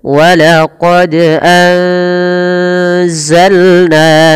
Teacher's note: samarkan suara nunnya kepada huruf zai karena di sini ada bacaan ikhfa